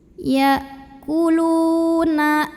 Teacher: Karena ada waw sukun yang didahului baris dhammah. Cara membacanya dipanjangkan lamnya 2 harokat saja. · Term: matobi'i